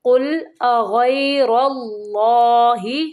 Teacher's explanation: غین کو پر پڑھیں گے، را کو بھی پر یعنی موٹا پڑھیں گے، اور اللہ کے نام کو بھی پر پڑھیں گے